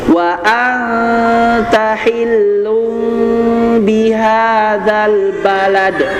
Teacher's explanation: Jadi menyamarkan bunyi em ya. Jadi n-nya berubah jadi m dan m-nya dibaca samar. Jadi ketika melafalkan langsung mim samar ya. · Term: iqlab